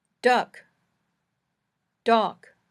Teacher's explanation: when you say uh your tongue is right in the middle of your mouth where it is when you're relaxing and not talking when you say a your tongue is lower in your mouth